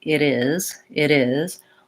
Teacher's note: when I say it is, and I link those two words, this T also becomes more of a D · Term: flap T